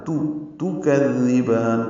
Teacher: کذبان کاف کو نرمی سے پڑھیں گے، زال سے ملائیں گے، زال کو نرمی سے پڑھیں گے، زبان کی نوک سامنے کے دانتوں کے اندرونی کناروں سے لگائیں گے